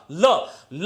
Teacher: उसके दोनों और पार्श्वों से वायु का निस्सरण होता है, इसलिए ल जो है पार्श्विक ध्वनि है